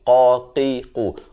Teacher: Makhrajnya di pangkal lidah. Lidah kita tadi itu di pangkalnya.